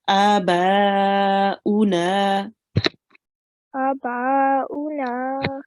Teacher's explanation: this alif is prolonged for a little tiny bit longer, and the ba even longer because we have a madde kabir, an extra long stretch here. Okay, so it will be prolonged.